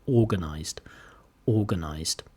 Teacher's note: main stress on the first syllable no stress on on the second syllable and small stress on the last syllable